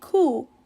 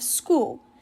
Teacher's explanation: For an example, saying cool instead of school. They are leaving out the S at the beginning of the word. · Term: omissions